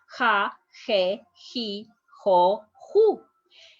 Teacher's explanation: it's a little bit stronger than the h in english